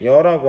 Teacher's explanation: 이하고 어라는 2개의 단모음이 있었는데 여라고 하는 하나의 이중 모음이 됐어요